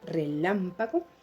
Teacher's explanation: Pero si aplico la ley del acento final, voy a revisar la última palabra, relámpago, donde lleva la mayor fuerza de voz, lam, muy bien, y ocupa el antepenúltimo lugar de la palabra y eso la convierte en una palabra esdrújula.